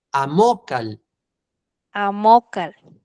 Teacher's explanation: Pronuncia fuerte en la de en medio, no al final. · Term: palabras graves